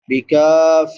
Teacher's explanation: کاف کے بعد الف مدہ ہے، الف سے پہلے زبر ہے تو اس کو ایک الف برابر لمبا کریں گے